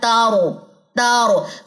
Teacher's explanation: जुबान की पुष्ट वाला जब किनारा है वो सनाया औलिया और रुबाई के मसूड़ों से लगता है तो रा अदा होता है · زبان کی پشت والا جب کنارہ ہے وہ ثنایا اولیاء اور ربائی کے مسوڑوں سے لگتا ہے تو را ادا ہوتا ہے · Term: را کا مخرج